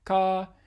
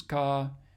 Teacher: a high level tone contrasting with the second one, which is supposed to be a mid-level tone